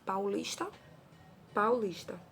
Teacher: Olha lá, vogal A, semivogal U. E oral porque ele sai todo pela boca.